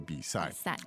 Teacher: and that's third tone and fourth tone